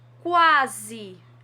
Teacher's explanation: O A tem um som bem mais forte do que o U, portanto, ele é a vogal e o U é a semivogal.